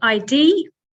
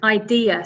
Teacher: So 3 syllables, and the stress is on the second syllable.